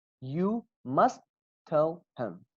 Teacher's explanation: Only one T comes out in your mouth while you're speaking fast, or while you're trying to be fluent with your English.